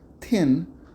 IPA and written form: θin (thin)